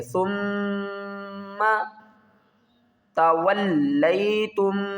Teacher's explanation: سا کو میم کے ساتھ ملائیں گے، میم کے اوپر غنہ کریں گے ، ثم تولیتم، واؤ کو لام کے ساتھ ملائیں گے، یہاں